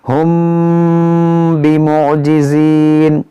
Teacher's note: میم ساکن کے بعد با ہے، تو یہاں پر اخفاء شفوی ہوگا، یعنی یہاں پر غنہ کریں گے